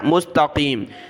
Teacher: इस क़ाफ को मोटा किया